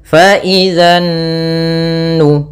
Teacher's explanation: Kemudian pada lafal nun sendiri ada bacaan gunnah, yaitu kita tahan suara nunnya sepanjang 2 harokat. Fa idzan nu, baru dilepas.